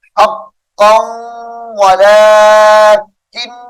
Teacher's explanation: نون مشدد کی وجہ سے غنہ کر کے پڑھیں گے